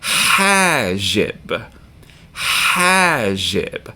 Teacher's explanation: accent on the first syllable because it has a long vowel